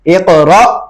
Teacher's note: جب وقف میں بھی اس کو اقرا پڑھیں گے, را کے بعد حمزہ ساکن ہے تو جھٹکا دیں گے حمزہ پہ